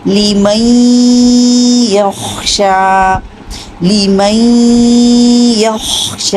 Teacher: یا کا مخرج بھی لیجئے اور غنہ بھی کیجئے، یعنی آواز ناک میں لے کر جائیے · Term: ادغام غنہ کے ساتھ